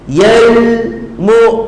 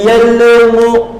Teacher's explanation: Tuliyan lam tanda sukun izhar qamari. Jelaskan bunyi lam itu tanpa dengung, tanpa qalqalah. Yal mu, jangan yalmu, itu qalqalah.